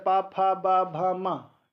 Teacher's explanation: पावर्ग, पावर्ग ओष्ठ से बोला जाता है। ओष्ठ से बोला जाता है, पा, फा, बा, भा, मा।